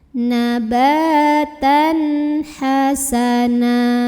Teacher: baris fathah 2 ini jadi satu, jadi fathah na dan panjangin 2 harokat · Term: mad iwad